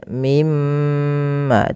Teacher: Waman azlamu dia bukan az tapi ya ad aibil ya tebalkan adlamu waman adlamu mimman mana kemudian lafal mimma di sini ada bacaan ghunah pada lafal mim berharakat tasydid maka teman-teman ketika kita membaca mim tasydid ini itu perlu ditahan suara ghunahnya nya ya atau memahan suara mimnya.